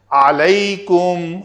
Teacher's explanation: عین کو ادا کر کے عین کے اوپر زبر پڑھنی ہے، نہ کہ اس کو الیکم کر دینا ہے، وہ دوسرا لفظ ہو جائے گا الا۔